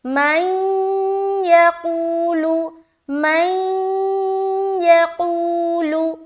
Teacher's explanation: ہم ادغام ناقص کر رہے ہیں، غنے کے ساتھ ادغام کریں گے۔ مَن يَقُولُ، مَن يَقُولُ، یقول، قو میں واو مدہ، لام کو ہم پیش کی حرکت کے ساتھ معروف پڑھیں گے جلد۔